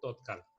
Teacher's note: ত হচ্ছে এখানে প্রথম সারির ধ্বনি, আর প্রথম সারির ধ্বনিটি হচ্ছে অঘোষ অল্প প্রাণ